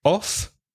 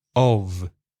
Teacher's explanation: two prepositions when there's a double F o double F off there's no vibration in the throat